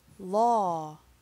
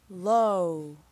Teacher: at the end of law your mouth stays open and at the end of low your mouth is almost closed